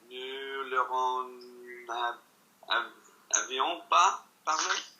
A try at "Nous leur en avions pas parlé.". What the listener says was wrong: Take the questioning tone of voice out your voice. Say it again. Keep the same rhythm.